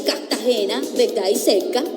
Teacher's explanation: Cuando hay R, se encuentra antes de una consonante. Este fenómeno consiste en eliminar la R y pronunciar la siguiente consonante como si fueran dos.